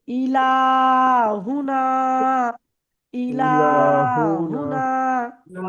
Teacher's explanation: ইলাহুনা দেখেন হামজা জের ই, হামজার নিচে জের, হামজার নিচে জের হারাকাত তাড়াতাড়ি পড়তে হবে, টান দেওয়া নিষেধ। · লামের উপরে খাড়া জবর, খাড়া জবর আলিফ মাদ্দার সমান এক আলিফ পরিমাণ টেনে পড়তে হবে।